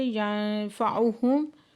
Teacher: نون ساکن کے بعد فا ہے تو یہاں پہ اکفا کریں گے